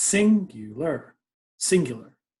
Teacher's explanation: The U is actually the kind of the softer part. So it's singular, singular. We kind of go down when we hit the U.